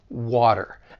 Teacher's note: t comes between two vow sounds like in the word water you don't hear a true T you hear a flap T